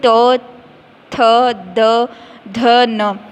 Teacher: ये पूरी लाइन का उच्चारण स्थान क्या हो जाएगा दंत, यानी कि दांतों के से जो है इनका उच्चारण होता है